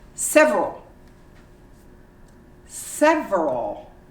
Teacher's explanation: You omit the E and you say several.